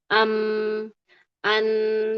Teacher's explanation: sisi ketahannya di makhraj ujung lidah, sisi mengalirnya adalah digunah dia lewat khaisyum. · Tahan dia di sini ya. Karena bibirnya ketahan, bibirnya merapat, enggak bisa lewat. Tapi di sisi yang lain, dia mengalir dari rongga hidung. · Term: huruf mim